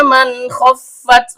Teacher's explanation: Terdapat mim lagi yang keluar dari bibir, nun, ujung lidah bertemu dengan langit-langit bagian tengah. Karena nunnya sukun bertemu dengan kho yang keluar dari tenggorokan bagian atas, maka di sini terjadi hukum bacaan izhar halqi. Nun sukunnya dibaca jelas tanpa dengung. Fa huruf bibir, yaitu perut bibir bawah bertemu dengan ujung gigi seri atas.